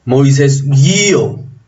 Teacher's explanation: El acento está en la abierta. Esto quiere decir que estamos ante un diptongo.